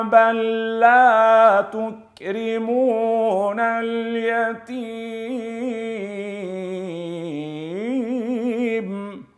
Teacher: كلا بل لا تكرمون اليتي م لاحظوا كيف اللام وبعد منه اللام الساكنه بل وبعد منا اللام المتحركه لا فتصبح لام واحده بل لا تكرمون اليتيم قد دخلوا فتصبح قد دخلوا بصير دال